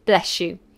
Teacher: you do say bless you, and it sounds like a sh